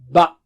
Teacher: دونوں ہونٹوں کے اندرونی حصے کو تھوڑا سے اندر ان کو ملانے سے با ادا ہوتا ہے